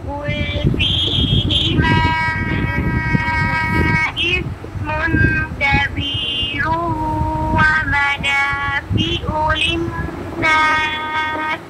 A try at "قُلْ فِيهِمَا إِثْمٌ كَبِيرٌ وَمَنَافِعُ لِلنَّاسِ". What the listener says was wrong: आपने इस्मुन पे गुन्ना कंप्लीट नहीं किया, फिर पढ़ो। इस्मुन कुल फीहिमा इस्मुन पे।